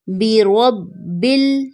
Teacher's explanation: یہاں پر را بولڈ ہے اور با پر شد ہے، تو ہم با کو زور دے کر پڑھیں گے